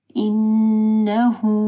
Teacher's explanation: نون مشدد ہے، ہا کے اوپر پیش ہے، پھر یہ مد صلہ صغرا ہے، چھوٹی سی واو جو آپ کو نظر آ رہی ہے، ٹھیک ہے.